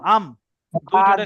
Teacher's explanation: দুই ঠোঁটের ভিজে অংশ থেকে উচ্চারণ হচ্ছে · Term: মিম